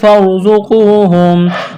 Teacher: والمساکین فارزقوہم، را ساکن سے پہلے زبر ہے، را کو موٹا کرنا ہے، زا میں سیٹی کی آواز پیدا کریں گے، قاف واو پیش کو، قاف کو موٹا کرنا ہے، واو ساکن سے پہلے پیش ہے، واو مدہ ہے، ایک الف کے برابر کھینچنا ہے